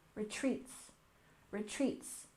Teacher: And retreat, we stress the second syllable